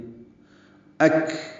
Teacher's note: یہ کاف ساکن ہے. اس پہ ہمس ہے.